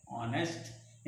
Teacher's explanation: यहाँ पर एच का उच्चारण साइलेंट है, यहाँ ओ का उच्चारण शुरू होता है, इसलिए इसको हम कहते हैं ऑनेस्ट। यहाँ पर हॉनेस्ट नहीं पढ़ते, ऑनेस्ट पढ़ते हैं।